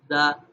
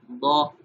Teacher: دال کو نرمی سے پڑھا جائے گا دا، اور ضاد کو موٹا کیا جائے گا ضا